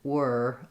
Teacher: It's about keeping the tongue kind of in the schwa position uh, and having as small of movements as possible instead of like we a lot of big movement were.